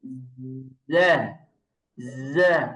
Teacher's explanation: জায়ের উচ্চারণের ক্ষেত্রে খেয়াল করেন, সিনের আওয়াজ নেই, জা, জা, আওয়াজ আবার ছড়িয়ে যাবে না, যা এরকম হবে না, হ্যাঁ।